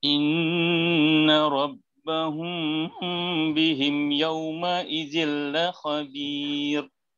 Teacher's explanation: Okey, itulah antara contoh yang kita boleh kenal bila kita dah tahu mim mati bertemu dengan ba, hukumnya ikhfa syafawi dan cara bacaannya dengung 2 harakat dan cara sebutannya pula kita rapatkan kedua-dua bibir mulut lebih mudah daripada kita bagi rongga.